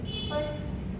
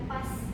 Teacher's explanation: terdengar agak melemah seolah menjadi pes bukan pas penuh